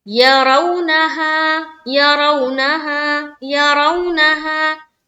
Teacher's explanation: आगे चलेंगे, मीम को जल्द पढ़ेंगे, माँ, यरौनहा, यरौनहा, यरौनहा, या को जल्द पढ़ा, रौ में रा को हम पुर रखेंगे यानी कि मोटा करके पढ़ेंगे वाव से मिलाते हुए, और वाव के ऊपर क्या है, सुकून है और उससे पहले जबर है। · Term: रा को पुर